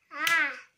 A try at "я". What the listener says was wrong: Нет, не а, а я.